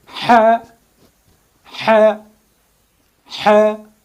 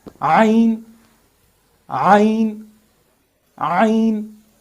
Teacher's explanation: These two huruf are articulated by contracting the middle part of our throat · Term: WAST HALAQ